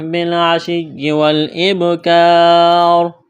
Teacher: یہاں پر وقف کریں گے تو را کو ساکن کریں گے